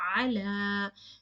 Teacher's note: So now you can see here ala is in the original form with the alif makhsura, and you can see an alif saghira over it. That means you have to prolong the sound of that alif makhsura into two counts. For example, ala, you have to prolong the sound.